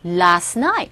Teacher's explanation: 트 사운드가 거의 안 들리죠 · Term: T사운드 생략